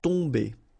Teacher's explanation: You don't pronounce the m at all, so it's really a nasal, so it goes in your nose.